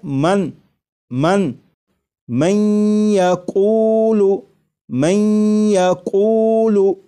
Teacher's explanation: یہاں پر دیکھیے گا یہ نون ساکن ہے، نون ساکن کے بعد جب یا آ جائے تو نون ساکن کو یا میں ادغام کر کے پڑھیں گے، ملا کر پڑھیں گے، اور نون ساکن کو یا میں ادغام اس طرح کریں گے کہ غنہ بھی ہو